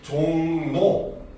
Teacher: 종로라면 말이 있는데 얘가 동화가 일어나면 발음을 할 때 종노 요렇게 변하죠 바로 초성이 변했기 때문에 이런 걸 우리는 순행 동화다라고 이야기를 합니다